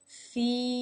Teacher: as an example the word feel feel now as you notice there was a sound Oh before the tongue came up to finish off the l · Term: dark L